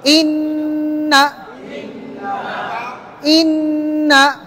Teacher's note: প্রথমতে 3 আলিফ টান আছে, দ্বিতীয়টা কি এক আলিফও না, দ্বিতীয়টা কোনো টান নাই, নুন জবর না, গুণ নাই, ধরে রাখবেন ইন, কিন্তু না বলার সময় টান হবে না, যেহেতু এখানে এক জবর আছে।